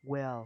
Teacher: Và chữ will chị sẽ đọc là chữ will và chị sẽ cong lưỡi nhẹ chị nhé.